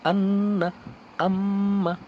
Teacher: গুনগুন করে আপনাকে উচ্চারণ করতে হবে অর্থাৎ নাকের যে বাঁশি আছে ওখান থেকে উচ্চারিত হবে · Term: গুন্নাহ